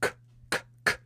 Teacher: What that means is that when you make the k sound, you go k, k, k. You're not voicing it. Okay? Your voice isn't making any noise.